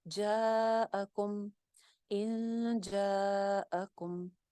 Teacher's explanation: کم کی میم کے اوپر کوئی غنہ نہیں ہے، کم کے اوپر ہم غنے نہیں کریں گے · الف مدہ تھا، آگے حمزہ آ رہا ہے تو الف مدہ کے اوپر مد آ رہی ہے